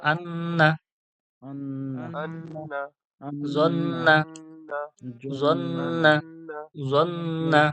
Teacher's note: নুন আর মিমের উপরে যখন তাসদিদ আসবে, সেই তাসদিদটার আওয়াজটা কি করে করতে হবে? গুন্না করে ধরে রেখে পড়তে হবে, নাকের মধ্যে গুনগুন করে আওয়াজ